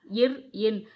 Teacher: மேல்வாயை நாக்கின் நுனி மிகவும் பொருந்துவதால் பிறக்கும் எழுத்துக்கள்